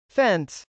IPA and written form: fˈɛns (fence)